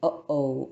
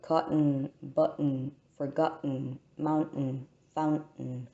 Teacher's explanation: This is the sound that happens if the air is stopped completely at the glottis by tightly closing the vocal cords. And this sound appears in the interjection uh-oh, or the words like cotton, button, forgotten, mountain, fountain. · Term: glottal stop